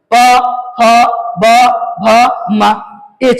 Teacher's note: प वर्ग को बोलने के लिए इसमें जो है होट का प्रयोग होगा ही होगा